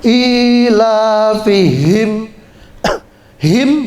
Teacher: ha besar suaranya di dada